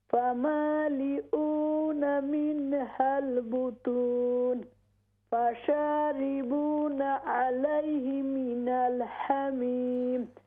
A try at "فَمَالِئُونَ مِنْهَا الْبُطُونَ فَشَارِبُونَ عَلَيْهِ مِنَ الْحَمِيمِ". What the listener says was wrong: Yeah, we don't bounce lam.